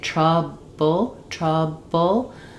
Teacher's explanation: So the b my lips both lips close when I say trble trouble my lips close and there's a little bit of burst and release for that b sound